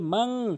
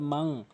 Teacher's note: ইকফা হাকিকি হিসাবে গুন্নাহ করতে হবে মাং